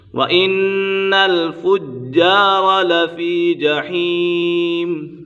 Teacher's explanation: وَإِنَّ الْفُجَّارَ لَفِي جَحِيمٍ، وَإِنَّ نون مشدد ہے، نون مشدد میں ہمیشہ غنہ ہوتا ہے۔ جیم مشدد ہے، اسے جماع کے ساتھ پڑھیں گے اور یہ جیم کے اوپر قلقلہ بھی ہو رہا ہے۔ وَإِنَّ الْفُجَّارَ لَفِي جَحِيمٍ، یہاں پر بھی مد عارض کا قاعدہ لگ رہا ہے۔